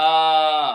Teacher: तो कंठ से इसका आवाज निकलता है